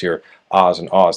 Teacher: the low back vowels, your ahs and ahs that are pronounced with your tongue low and back